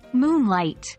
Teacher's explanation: we stress Moon Over light